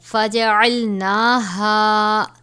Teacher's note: فَقُلْنَا لَهُمْ كُونُوا قِرَدَةً خَاسِئِينَ فَجَعَلْنَاهَا، اب یہاں پر نون ہے، نون کے اوپر کھڑا زبر ہے، اس کی مقدار ایک الف کے برابر ہے